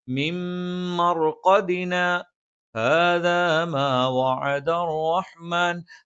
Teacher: മിം മർഖദിന എന്ന് ഓതിയിട്ട് ശ്വാസം വിട്ടിട്ട് ഹാദ എന്ന് ഓതാൻ പാടില്ല, ശ്വാസം വിടാതെ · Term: സക്ത